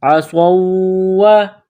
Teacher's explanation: واو مشدد ہے تو صاد کو واو کے ساتھ ملانا ہے، واو میں سختی کرنی ہے